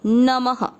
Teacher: म में अ की मात्रा तो विसर्ग को पढ़ना है ह